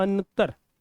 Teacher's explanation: इथे अनुनासिकाचा उच्चार हा न प्रमाणे होणार आहे